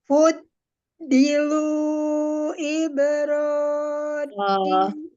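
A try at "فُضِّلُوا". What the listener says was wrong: Jangan kepanjangan. Itu alifnya alif sifar dianggap tidak ada, tetap matobi'i.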